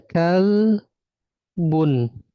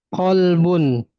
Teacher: Kalau kaf itu dia pangkal lidah menempel pada langit-langit lunak dan keras. Sedangkan qf itu menempel pada langit-langit lunak saja ya.